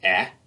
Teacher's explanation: As we move down from I, we get eh in the middle of the mouth, and then even lower, drop your jaw, you get the ah. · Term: short E